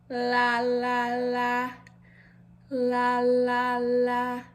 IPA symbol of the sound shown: l